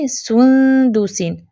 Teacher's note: سو پیش کے لیے ہونٹ گول کیے، لیکن اخفا کرتے ہوئے فوراً سے آپ نے اپنے ہونٹ سیدھے کر لینے ہیں